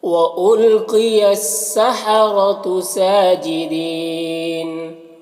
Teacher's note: وَأُلْقِيَ قاف یہ حروف مستعلیہ میں سے ہے، اسے پر پڑھنا ہے۔ سحرۃ را کے اوپر زبر ہے تو را کو پر پڑھیں گے۔ ساجدین سین کے اوپر کھڑا زبر ہے، یہ الف مدہ کی طرح ہوتا ہے تو اسے ایک الف کے برابر کھینچیں گے۔ · سین کے اوپر کھڑا زبر ہے، یہ الف مدہ کی طرح ہوتا ہے تو اسے ایک الف کے برابر کھینچیں گے۔ دین یہاں پر یا مدہ ہے، یا ساکن سے پہلے دال کے نیچے زیر ہے تو یا مدہ ہوا۔ · اس کے بعد نون کے اوپر زبر ہے اور یہاں پر وقف کریں گے تو نون کا زبر سکون سے بدل جائے گا تو پھر مد عارض وقفی ہوگا، اور اس میں طول توسط قصر تینوں جائز ہوتا ہے